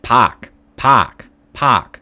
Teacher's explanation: if there's an ar sound it's not r but ah almost